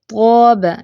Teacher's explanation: منہ بھاری بھی ہوگا، ٹھیک ہے، منہ بھر کے اس کو ادا کرنا ہے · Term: تفخیم